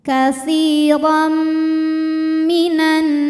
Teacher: Kemudian ada hukum idgham bi gunnah karena ada tanwin fathah menghadapi huruf mim. Maka tanwin dileburkan ke mim, masuk ke mim, disertai bunyi dengung